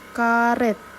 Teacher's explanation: huruf e-nya ini bukan e terbuka melainkan e tertutup